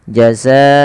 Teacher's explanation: dan dia wajib kita panjangkan 4 atau 5 harakat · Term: mad wajib muttasil